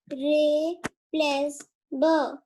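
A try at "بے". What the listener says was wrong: मैंने बोला ना, ब नहीं है, बे है, ये बे।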